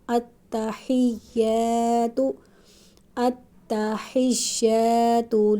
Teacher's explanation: التحیات پہ الف مدہ ہے، ایک الف کے برابر لمبا کریں گے۔